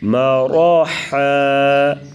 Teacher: میم زبر م، را زبر را، مرا، ح 2 زبر حن، مراحا، وقف مراحا۔ را پر زبر تو را کو پر پڑھیں گے اور حا کی آواز گلے سے نکالیں گے